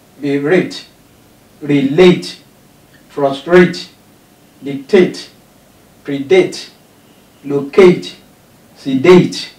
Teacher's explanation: The first one is written in small letter, while the second one is written in capital letter, which means it is stressed. The last syllable is stressed.